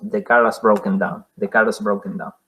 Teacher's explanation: Este es el caso de linking ra. Linking en el sentido de unión. La R, el sonido R que une.